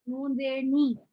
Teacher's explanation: जबान के तालु से मिलाया और जेर के साथ पढ़ा